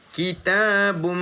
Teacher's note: Kan dibaca ki 1 ta 2, kitabun tanwin bertemu dengan min, hukum dia idgham al-ghunnah. Kitabum, dengung 2 harakat tutup mulut